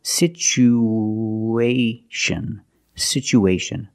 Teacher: we need to link these vowels with the sound woo like the W sound